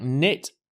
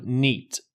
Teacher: Spanish speakers often extend the short I and make it into an E.